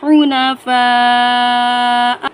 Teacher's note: الف مدہ ہے اس کے ساتھ اور اس پر بڑی مد ہے، 5 الف کے برابر کھینچ کر پڑھیں گے۔